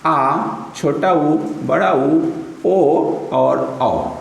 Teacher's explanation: स्वर में जिह्वा का पिछला हिस्सा भाग लेता है, वो थोड़ा सा ऊपर उठता है, इसलिए इसे बोलते हैं पश्च स्वर